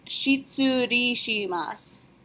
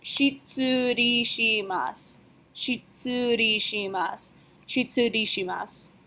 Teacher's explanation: su at the end, we're going to drop our u sound and just say it like an S